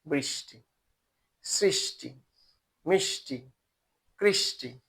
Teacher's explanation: বলছি যে মূর্ধন্য স শুধু তৎসম শব্দের ক্ষেত্রেই প্রয়োগ কাজেই এটা আমাদের একটা স পাচ্ছি মূর্ধা থেকে উচ্চারিত